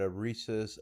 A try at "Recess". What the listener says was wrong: A Reese's, like the peanut butter cup Reese's? Oh, you meant Recess. It sounded like you said a Reese's. Recess? Or I thought you meant the candy.